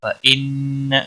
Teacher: وَرَفَعْنَا لَكَ ذِكْرَكَ فَإِنَّ مَعَ الْعُسْرِ يُسْرًا۔ فَإِنَّ، نون مشدد پر گنہ ہوگا